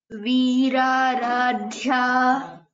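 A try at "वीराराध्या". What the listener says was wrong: Tamam, correct.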